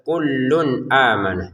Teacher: Kullun di sini tanwin bertemu hamzah, kita baca dengan jelas.